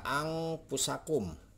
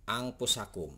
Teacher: Jadi huruf nun mati ini tidak akan dibaca jelas. Jadi akan disamarkan atau disembunyikan dengan bunyi ang. · Nah, ikhfa itu adalah sini menyembunyikan menyamarkan bunyi nun mati atau tanwin dengan huruf yang ada di depannya dengan bunyi eng